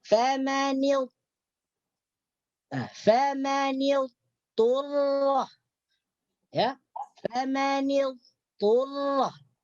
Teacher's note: dhat ini memang tidak diucapkan, hilang karena diidghamkan ke dalam huruf to. Cuman yang tersisa itu sifatnya, yaitu tinggi. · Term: idgham nakis